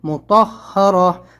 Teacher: ہا کے اوپر تشدید ہے، ہا کو 2 بار پڑھیں گے